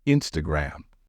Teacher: the stress in this word should fall on the first syllable